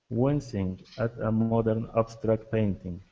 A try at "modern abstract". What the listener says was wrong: Okay, watch your R sounds on modern and abstract. Okay, instead of modern and abstract. Okay, modern, abstract.